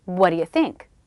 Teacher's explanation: I reduce the vowel to the schwa, d, d. I say it as fast as I can. You might notice I'm dropping the T in what and reducing the vowel in u to the schwa as well.